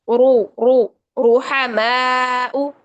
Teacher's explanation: र पर पेश हो तो यह र मोटी पड़ी जाएगी। कैसे? मुंह भर के रू रू रूहमाउ आगे देखिए युबूना रु करके बारीक हो जाएगी।